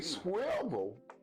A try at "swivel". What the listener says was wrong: You said swivel. Listen to how you're saying it. Swivel. There's still an L at the end of the word.